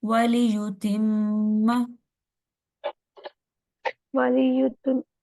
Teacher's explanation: ہونٹ گول ہوں گے، ليطهركم ليطهركم ولی وَلِيُتِمَّ نِعْمَتَهُ، وليتم نعمته میم کے اوپر غنہ کریں گے، میم کے اوپر شد ہے